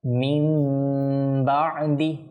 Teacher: আর না, আসলে কায়দা হচ্ছে নুন সাকিনের পর যদি বা আসে অথবা তানবিনের পর যদি বা আসে তাহলে সেখানে ইকলাব করে পাঠ করতে হয়, অর্থাৎ এই নুন সাকিনটা পরিবর্তন হয়ে মিম সাকিনে রূপান্তর হয়ে যায়।